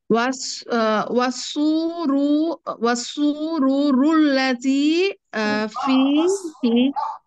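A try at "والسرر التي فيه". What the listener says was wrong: সুরুরা, রার উপরে ফাতহা, ওয়াসসুরুরাল্লাতী ফীহি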